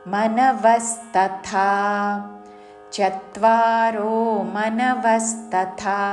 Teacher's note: వ మీద ఆఘాత చివరిలో థ మహాప్రాణక్షరము థ దీర్ఘముతో